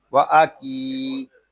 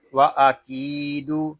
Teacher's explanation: یہاں کاف کو ہم ایک الف تک کھینچ کر پڑھیں گے کیونکہ یہاں پہ یا مدہ ہو رہا ہے، و آ کی، دال پیش دو، و آکیدو، کاف یا زبر کئی، دال دو زبر دن، کئی دن۔